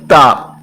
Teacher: اس کے بعد دیکھیں تا، یہ لکھا ہوا ہے، دیکھیں تا حروف نطعیہ اس کا لقب ہے، اور یہ زبان کی نوک اور اوپر کے دانتوں کی جڑ سے ادا ہوتا ہے